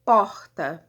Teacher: Então, os sons bilabiais, por exemplo, p, quando eu falo porta, por exemplo, esse som p, eu tenho aí o encontro total, né, o fechamento total da minha cavidade oral pelos articuladores ativo e passivo, que são os meus lábios superior e inferior. E nesse movimento, né, de tocar e afastar, eu tenho aí uma explosãozinha, né?